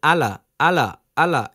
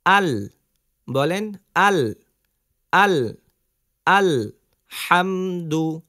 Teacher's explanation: করেন আলহামদু বলেন আলা আলা আলা এরকম লামটা উঠে যায় কিন্তু যেহেতু লামের উপরে সাকিন রয়েছে তো লামকে আমরা কি করব ধরে রাখবো